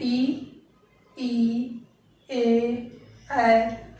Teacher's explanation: जीभ के अगले हिस्से का हम प्रयोग कर रहे हैं, इसलिए अग्र स्वर